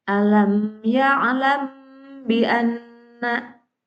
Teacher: Suatu bacaan dikatakan hukumnya ikhfa sapawi apabila ada mim sukun bertemu dengan huruf ba. Dan cara bacanya dibaca dengan samar antara mim dan ba pada bibir ditahan 2 ketukan